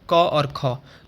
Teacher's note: जिनका उच्चारण करते समय हमारे गले में कंपन नहीं होता उनको क्या बोलते हैं? उनको बोलते हैं आपके अघोष व्यंजन